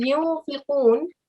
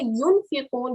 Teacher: you are hiding the sound of the noon, like a nasalization. · when I'm saying yunfiqun, I'm hiding the sound of the noon. I could say yunfiqun, but that would be incorrect because I'm giving a full clear noon sound there. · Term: ikhfa, hide the sound of the noon